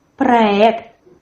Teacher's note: In the word проект, the stress as well falls on the last syllable. There's a firm R, проект.